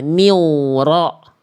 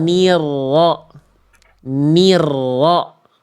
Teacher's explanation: kita getarkan rnya dengan jelas dulu aja